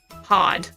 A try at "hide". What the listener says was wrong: Hide. No, not hide. You're not pronouncing the E. Hide. Hide.